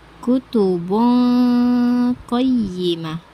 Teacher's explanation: Sedangkan menurut istilah, ikfa berarti menyamarkan nun sukun atau tanwin karena muncul suara dengungan atau gunah